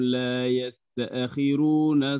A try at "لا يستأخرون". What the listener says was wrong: ثاني فإذا جاء أجلهم لا يستأخروا، فخم الراء، لا يستأخروا. لا لا لا لا لا لا, لا تفصل بين التاء والهمزة، صلها جميعا، ما تأخذ فيها هنا سكت أو نفس. لا يستأخرون تأخرون تأخرون.